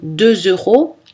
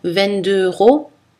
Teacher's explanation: si c'est un petit prix comme 2 euros là on a la liaison mais si c'est un plus grand prix comme 22 euros souvent on n'a pas la liaison